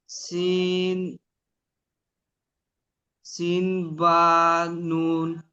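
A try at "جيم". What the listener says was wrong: বা নয়, জিম, জিম।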